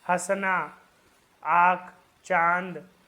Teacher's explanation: वहीं देखिए जिन स्वरों के उच्चारण में मुंह के साथ साथ नासिका का भी सहायता लेनी पड़ती है, मतलब नाक की भी सहायता लेनी पड़ती है, मतलब मुंह से तो बोल ही रहे लेकिन नाक भी उसमें सहयोग कर रहा है, अर्थात जिन स्वरों का उच्चारण मुख और नासिका दोनों से किया जाता है वे अनुनासिक कहलाते हैं